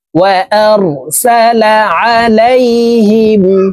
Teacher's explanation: এই আইন হরফকে হলকের মধ্যখান থেকে চাপ দিয়ে উচ্চারণ করব।